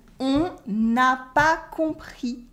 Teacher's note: with la liaison, you can hear the N at the end of on. It is usually silent, but because we have a vowel after, you can hear it. So when you hear on n'a pas compris in normal everyday spoken French, it sounds like the ne is actually there.